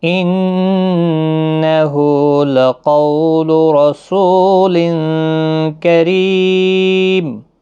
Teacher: نون مشدد پر غنہ ہوگا، ہا کے اوپر الٹا پیش ہے، 1 الف کی مقدار کے برابر کھینچ کر پڑھیں گے. لقو قو واولین ہے، قاف مستعلیہ ہے، پر بھی پڑھنا ہے، را زبر کی وجہ سے پر پڑھا جائے گا.